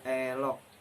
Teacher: vokal depan tengah tak bunder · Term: vokal depan tengah tak bundar